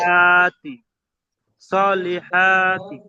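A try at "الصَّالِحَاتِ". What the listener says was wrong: দেখেন, যখন আপনি ছাড়বেন ওখানে, সেখানে সলিহাত বলবেন, ঠিক আছে? যেহেতু তায়ের উপরে ছাড়ছেন, তাটা সাকিন করবেন, ঠিক আছে? সলিহাত।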